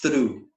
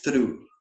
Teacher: é o TH unvoiced, é o TH mudo que a gente chamaria em português. Ele só tem esse som.